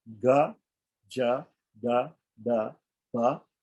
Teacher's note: The second column is a unvoiced, aspirated column. The third is a voiced unaspirated column. The fourth is a voiced aspirated column.